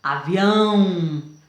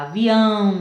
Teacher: O som sai pelo nariz e pela boca. Olha, avião no final. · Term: som nasal